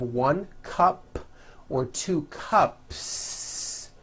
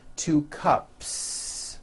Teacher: cup cup it ends with an unvoiced P cup well then if you add an S to the word cup to make it plural the s you add also remains unvoiced